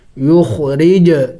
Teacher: جیم بھی حروف قلقلہ میں سے ہے، ساکن ہے تو قلقلہ کریں گے، ہلا کے پڑھیں گے